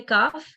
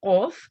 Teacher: Kaf, when you say kaf, your mouth opens wider, and when you say this qaf, your mouth rounds.